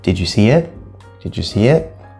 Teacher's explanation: so the intonation did you see it did you see it the intonation is going to go up ah and then I would also describe this as sort of a curl · But it definitely goes up at the end, not down, because it is a yes or no question. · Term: question tone